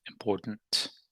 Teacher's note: So I said it with a D, or I can say it with this. I can say it with a stop T.